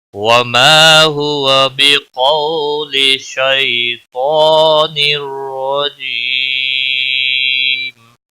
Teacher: تنوین کے بعد حروف یرملون کا را آیا ہے، ادغام ہوگا بلا گنہ ، را زبر کی وجہ سے پور بھی پڑا جائے گا،